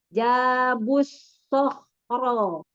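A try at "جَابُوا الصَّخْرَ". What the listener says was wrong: Lagi. Masih kurang monyong baknya. Jabus Sohro.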